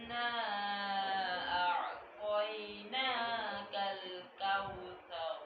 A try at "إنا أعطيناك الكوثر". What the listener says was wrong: বলো ত, এই লেখা ত, জিবার আগাটা উপরে লাগাও, উর দুইটাদের গোড়ার সাথে লাগাও। জিরিবা লাগাও না, এটা এভাবে লাগাও, উপরের দাঁতের গোড়া। আর এইদিকে ধরো, এভাবে ধরো, আল্লাহ বলো ত। তোমার তর উচ্চারণ হয়নি, সেই জন্য এখানে তয় ঠোঁটগুল হয়ে যায়। তয় তয় আমাদেরটা হয় নাই, তোমারটা তয় তয় এরকম হয়। এখানে হবে ও আসছে। ইউ কি ইন, ইন জিরবাটা লাগাইতে হবে উপর তালুর সাথে।